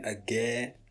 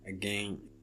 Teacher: It means that when you're saying the word again, so before you get to na, you open your nasal cavity for the pronunciation of e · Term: nasalized vowel